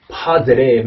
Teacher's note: 강세가 없는 그 두 개 그 모음 사이에서도 얘가 플랩으로 바뀌더라고요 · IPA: [ɾ]